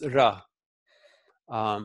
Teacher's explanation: It's not a trilled r, it's like a single little flap. · Just a single flap, a single flick of the tongue against the alveolar ridge.